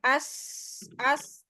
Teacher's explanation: ada sifat sofir yang mengalir ya desis kayak ada desisnya tuh